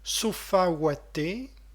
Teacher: ici cacophonie homovocalique en A sur diphtongue wa, malgré l'intercalation de ou